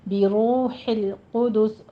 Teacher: ہے اور نا میں فتح قائمہ، 2 کاؤنٹ کیجیے، بروح القدس، را مفخم پڑھی جائے گی اور آگے واو مدہ ہے، دونوں ہونٹوں کو گول کیجیے